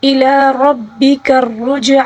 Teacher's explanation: را کے اوپر زبر ہے، اس کو موٹا پڑھیں گے